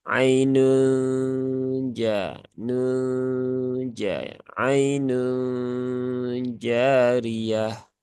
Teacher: Kemudian di sini ya ada nun sukun, nun tanwin ya bertemu dengan huruf jim ya, ikhfa hakiki, dan di situ ada proses gunnah, ada proses huruf suara yang masuk ke dalam sini rongga hidung